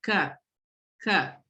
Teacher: But you, in a word like cut, in the end of syllables, on the end of words, you can maybe not release it. You can say cut, cut, and you just stop at the, before releasing the stop.